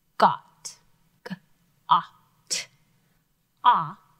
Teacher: vowels means they are closed another way to think about this the consonant at the end the t almost closes in the vowel and protects it makes it stay a short vowel sound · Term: Short O, closed syllable